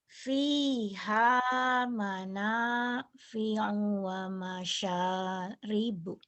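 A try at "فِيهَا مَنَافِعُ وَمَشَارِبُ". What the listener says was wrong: Sudah bagus, cuman di U-nya kurang cepat. Harus gini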